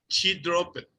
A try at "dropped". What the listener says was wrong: No, dropped. Dropped. No. Después de la P, una T. Dropped.